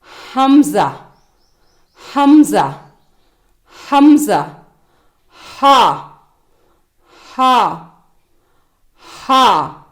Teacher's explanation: இவை தொண்டையின் கீழ் பகுதியில் இருந்து உச்சரிக்கப்படுகின்றன